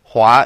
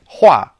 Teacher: hua is pronounced in the second tone meaning to row